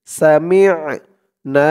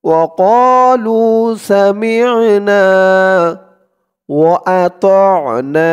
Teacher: আইনের উচ্চারণটা গলার ভিতর থেকে শক্ত হয়ে আসবে